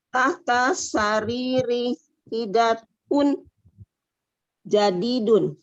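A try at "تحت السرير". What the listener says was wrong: Ini tadi catatan saya di alnya ya, di alif lam syamsiahnya. Tahta sariri, nah gitu tadi. Nah, itu dia ya, tahtas sariri.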